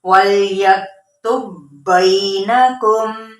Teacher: اب اس میں دیکھیں با کی جو کلکلے کی صفت ہے وہ اس کے اندر سے ختم ہو جائے گی۔